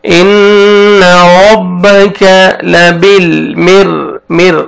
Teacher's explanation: را ساکن سے پہلے کسر ہے, را کو آپ نے باریک پڑھنا ہے. مر صاد, صاد کو موٹا کر کے پڑھیں گے اور الف مد ہے, ایک الف کے برابر آپ نے کھینچنا بھی ہے.